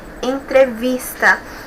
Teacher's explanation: nós temos aí a penúltima sílaba como a mais forte